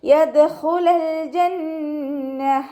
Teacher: ദാൽ ഖൽഖല letter ആയതുകൊണ്ട് full സുക്കൂന് കൊടുക്കാൻ ശ്രദ്ധിക്കുക